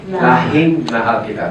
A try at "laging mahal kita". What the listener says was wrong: No, it's with a G. Laging with a G. Ging.